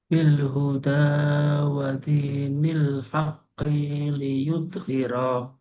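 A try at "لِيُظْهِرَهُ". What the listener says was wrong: Tinggal ini nih, ki-nya pendek. Wadinil haqqi liyudhhirah. Wadinil haqqi liyudhhirah. Ya, nah ini juga alat ini pulih, alat din atas agama karena dia menjelaskan yudhiroh, jadi ini juga harus mundur. Li yudhiroh, minimal dari sini.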